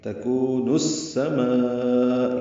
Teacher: ادغام شمسی ہے، الف لام نہیں پڑھا جائے گا اس لیے سین پر تشدید آئی ہے